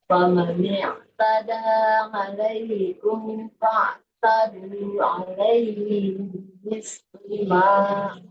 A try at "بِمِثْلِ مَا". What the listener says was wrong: Mimnya nggak boleh panjang ya.